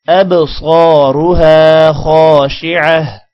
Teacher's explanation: خا کے بعد الف ہے لمبا کریں گے اور خا کو موٹا بھی کرنا ہے